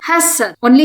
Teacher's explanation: Only short vowels are here. You should not stretch the sound.